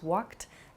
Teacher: You might hear a word like walked also, which has a sort of T sound about it. Walk becomes walked.